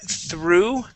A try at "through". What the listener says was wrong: Almost. You're saying true. It is through. Through.